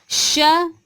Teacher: एक श जो हमारा है तालव्य वाला होता है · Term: तालव्य श